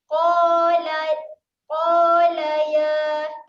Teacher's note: qaf, huruf tebal kita akan bunyikan dengan QO.